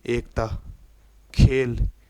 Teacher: अर्ध संवृत मतलब पूरा बंद ना होकर थोड़ा खुले रूप में मुख रहे